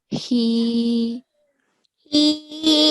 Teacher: the small ha, okay? And the sound comes from the bottom of the throat